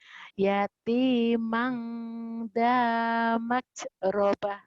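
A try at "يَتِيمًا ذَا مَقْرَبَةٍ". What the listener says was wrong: Bukan hamas tapi kol-kolah mak gitu ya. Yatimah dza maqrabah.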